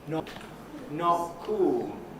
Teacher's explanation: Instead of not cool with a T, I'm saying not cool with a glottal stop.